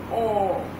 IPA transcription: ɔ: